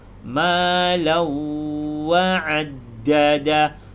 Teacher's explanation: tanwin bertemu dengan Wow kena masuk dan dengung pada huruf Waw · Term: idgham, idgham ma'al ghunnah